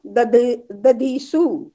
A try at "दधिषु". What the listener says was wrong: दधिषु दधिषु दधीषु नहीं दधिषु।